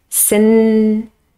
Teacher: The first word has contact, the tip of the tongue has contact with the palate just behind my teeth on this alveolar ridge